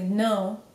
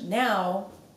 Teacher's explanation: there's a reason it's called a nasal vowel your nose literally vibrates to the sound